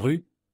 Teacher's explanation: Par exemple, pour dire rue, pensez à laisser vibrer ce R juste derrière votre palais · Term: le fameux R, français